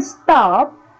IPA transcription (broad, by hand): stap